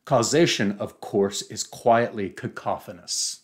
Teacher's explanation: And if that isn't enough, the sentence that follows immediately after this paragraph begins with a staccato of C plosives or K plosives